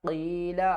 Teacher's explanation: قاف کو ہم نے پر پڑھنا ہے، اس کو کاف نہیں پڑھنا۔ قاف اور کاف میں آپ نے ہر حال میں فرق کرنا ہے۔